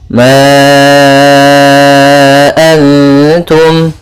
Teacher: Huruf mad di sini ada alif, datang setelahnya huruf hamzah. Maka bila hamzahnya di lain kata, maka kita namakan dengan mad jaiz munfasil, panjangnya 4 harakat.